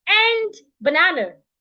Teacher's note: I'm approaching full stop already so I need to change from rising to falling